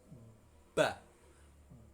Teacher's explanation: Kalau mengucapkan ba dan mem, kedua bibirnya tertutup merapat, ba. Ba, ma, wa.